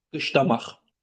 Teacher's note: Xeyr, x səsi ilə bitibdir. Kar samitlə bitib. Yəni son samitlər deyilik zaman dəyişmir.